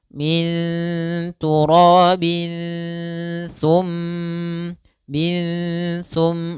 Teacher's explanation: ikhfa akrab juga karena suara sa masih dekat dengan suara nun. Maka kita samarkan suara tanwinnya langsung ke huruf sa-nya.